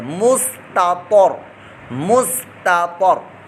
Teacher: دو تا تا اور تا دونوں کٹھے آ گئے ہیں تو یہاں ادائیگی بڑے دھیان سے آپ نے کرنی ہے. پہلے تا کو باریک پڑھنا ہے دوسرے تا کو پر موٹا کرنا ہے ورنہ آپ کی ادائیگی غلط ہو جائے گی اور آپ تو کو بھی تا پڑھ دیں گے مستطر.